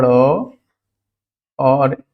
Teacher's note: उत्क्षिप्त व्यंजन क्यों कहते हैं, जब हम इसको बोलते हैं तो जीभ हमारी उछलती है